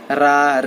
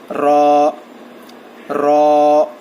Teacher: را کو جو ہے ہم موٹا پڑھیں گے اور تھوڑا کھینچنا چاہیے